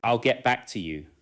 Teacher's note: In natural speech, I'll and to you may be weak, while back receives stress. The phrase becomes one listening unit.